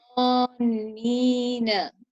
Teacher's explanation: you create a heavier sound with a rounder mouth